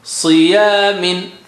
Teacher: Si again very thick and high sounding. Ya means low. Min is low.